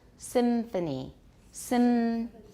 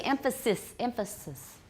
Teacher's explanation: Emphasis, it will probably usually be a labiodental nasal.